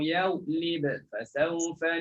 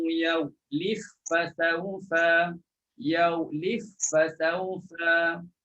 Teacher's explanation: Terus masukkan ba dalam fa. Dah tak ada lagi qalqalah.